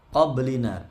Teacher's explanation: Min qablina, nun sukun ketemu qaf, ikhfa hakiki, disamarkan, didengungkan juga sekitar sampai 3 harokat. Qablina, baknya sukun di tengah-tengah seperti ini asli, yaitu qalqalah kecil atau sugro.